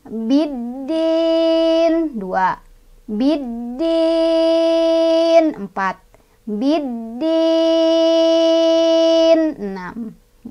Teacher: Nun awalnya kasrah karena berhenti jadi sukun ya. Jadilah dia mad aridli sukun. Panjangnya boleh 2, boleh 4, boleh 6.